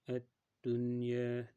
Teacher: Ya'ni nunni izhor qilganda bayniya sifatiga ko'ra bir harakat ushlaymiz, ya'ni ko'p g'unna qilib qo'ymaymiz. Ya'ni buni ad-dunya degan holatda ko'p ushlamaymiz. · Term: Izhar mutloq, izhar mutlaq